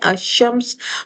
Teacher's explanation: جیسے شمس، شین حروف شمسی ہے، اگر ہم اسے معرفہ بنا رہے ہیں الشمس تو لام چھپ گیا، مدغم ہو گیا، لام نہیں پڑھا گیا۔ کیونکہ اگلا حرف مشدد آ گیا۔